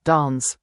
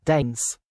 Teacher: In the UK, we often use a longer sound, like dance, but in the US, it's usually shorter, like dance.